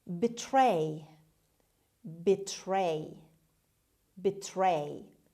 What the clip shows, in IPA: bɪˈtreɪ